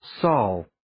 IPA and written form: sɔl (saul)